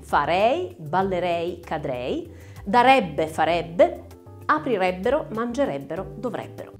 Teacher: teca trichechi nelle desinenze verbali dei condizionali in lei ebbe ebbero troviamo la è aperta ricordate prima persona singolare terza persona singolare e terza plurale